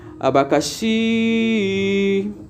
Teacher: a palavra abacaxi a tonicidade está no chi E como tá no chim Então ela é uma palavra oxítona